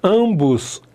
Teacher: Quando eu tenho ampois vem consoante. Então esse m apenas nasaliza o a.